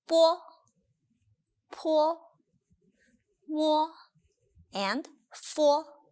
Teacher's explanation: In other words, B, P, M, and F. When O comes after these initials, it is actually pronounced as W.